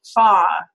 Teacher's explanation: British English versions of far where there's no r at the end far right we end with more of awah like an uh